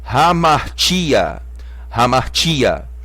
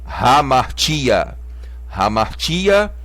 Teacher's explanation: o acento está no ti, então essa é a sílaba mais forte